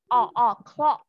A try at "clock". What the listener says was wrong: Đúng rồi. Âm K ở cuối cùng nữa. Đọc lại cho cô. Clock.